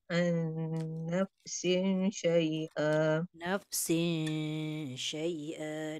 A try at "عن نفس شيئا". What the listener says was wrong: دengung tak cukup.